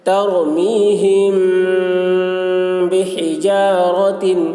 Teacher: میم ساکن کے بعد با آ رہا ہے، اس لیے غنہ کے ساتھ اخفا کریں گے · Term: اخفاء شفوی